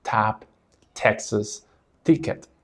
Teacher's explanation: your tongue touches above your top front teeth, your front teeth come together, and then you release a noticeable puff of air